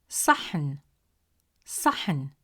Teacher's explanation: It is a deep sound pronounced from deeper in the mouth with more pressure and emphasis on the tongue pushed with more force from the back of the mouth.